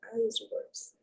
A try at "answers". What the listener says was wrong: answers. Don't pronounce the W. No, no guttural here.